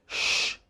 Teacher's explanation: tongue is rolled backwards lips are slightly rounded and there is greater pressure on the blade of the tongue